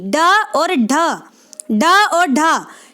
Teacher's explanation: ट वर्ग की ध्वनियां मूर्धन्य ध्वनियां होती हैं